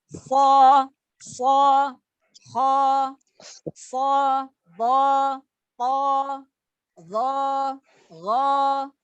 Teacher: jadi semua yang huruf tebal itu suara vokalnya yang keluar itu huruf o